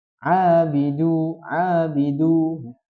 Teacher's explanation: Jadi harus panjangkan dua harakat. Tidak boleh lebih, tidak boleh kurang. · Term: mad thobii